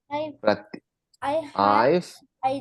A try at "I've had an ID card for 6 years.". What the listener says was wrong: Ok, te faltó hacer más énfasis en la pronunciación del an. I've had an ID card for 6 years. I've had an ID card. Entonces sí hay que hacer esas pausas y hay que practicar.